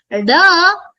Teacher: Da, as in Damaru, is Mrudu Alpa Prana.